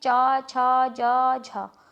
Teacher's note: जो तालव्य व्यंजन हमारे हैं इनमें से ये हैं च, छ, ज, झ, और इनको हम स्पर्श संघर्षी भी कहते हैं